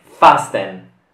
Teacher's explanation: La T è muta e quindi non si pronuncia.